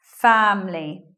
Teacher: Elision of schwa after M means that we're not saying the I there, so it just becomes family.